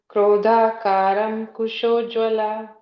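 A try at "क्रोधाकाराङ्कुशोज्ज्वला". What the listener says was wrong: Okay, if you are following the English one, yeah, Krodha Karankushojvala. So there is no ing here, okay? Krodha. After Krodha, it's only the Karankushojvala. Krodha Karankushojvala.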